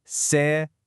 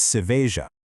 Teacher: In Portuguese, the J is soft. It vibrates. It actually sounds exactly like the S in the English word pleasure. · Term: zhush sound